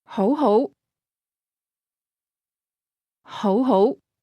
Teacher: Did you hear the two rising tones?